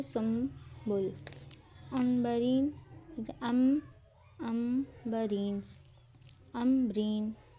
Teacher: نون ساکن یا تنوین کے بعد با آ جائے تو میم میں تبدیل ہو جاتا ہے۔ نون ساکن تنوین کے فوراً بعد با آ جائے تو نون کی آواز کو میم میں بدل دیتے ہیں۔ نون کے اوپر چھوٹا میم لکھا ہوتا ہے، ہونٹ دباؤ کے بغیر ملاتے ہیں اور دو حرکت ٹو کاؤنٹ کا غنہ ہوتا ہے۔ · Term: اقلاب